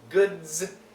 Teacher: go right into a hard vibrated D into a z sound